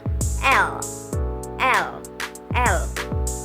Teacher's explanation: Lateral, udara mengalir lewat sisi lidah.